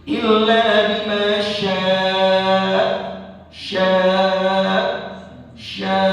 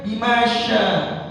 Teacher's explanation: Dan bacanya juga di ujungnya itu kayak ada huruf hamzah yang sukun.